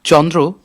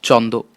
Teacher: মানুষ ক্রমে এ উচ্চারণ করতে লাগলো চন্দ। রফলা বাদ গেল, উচ্চারণ সহজ হয়ে গেল